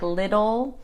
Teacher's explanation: When we pronounce the T like a D sound, like little, we actually call it a flap T